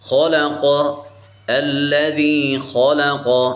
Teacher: یہاں خو پر بھی تخفیم ہے اور قوف پر بھی تخفیم ہے، اس کو ہم موٹا کر کے پڑھیں گے.